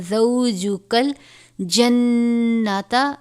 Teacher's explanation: نون مشدد ہے، آواز میں غنہ کریں گے